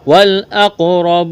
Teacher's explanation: قاف پر قلقلہ کریں گے، قاف کو موٹا کرنا ہے